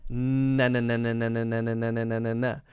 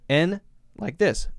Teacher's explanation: it's the front of the tongue that's blocking, behind the teeth. Na. A good way to hear the difference is to release it and close it many times, and then you can very clearly hear the difference. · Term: N sound